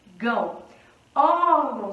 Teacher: sílaba tônica é um ó portanto temos uma paroxítona porque a penúltima sílaba que é mais forte · Órgão, sílaba tônica é o ó.